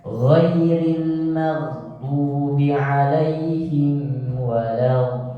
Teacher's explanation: Tekan di lam yang bertasydid.